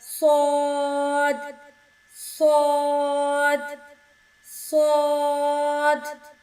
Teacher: زبان کی نوک اوپر والے اور نیچے والے دانتوں کے درمیان آنے سے ادا ہوگا۔ صاد میں سیٹی کی آواز آئے گی